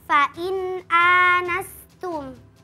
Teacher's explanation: Yang pertama pada kata fain anastum hukumnya izhar halqi. Karena nun sukun bertemu dengan huruf hamzah maka dibaca jelas.